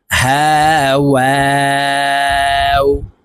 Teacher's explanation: ওয়াও হরফ ঠোঁট গোল করে উচ্চারণ করতে হবে, দুই ঠোঁটের মাঝে ফাঁকা থাকবে।